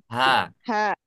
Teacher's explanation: Nih kalau ta marbutah seperti ini apabila kita waqaf kemudian tanya-nya seperti ini disukunkan maka bacanya berubah menjadi huruf ha